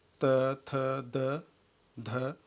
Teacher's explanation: तो यहाँ पे इस फिगर में जीभ की नोक ऊपर जा रही है और जो ये डेंटल प्लेस है उसको टच कर रही है। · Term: स्पर्शीय व्यंजन ध्वनियों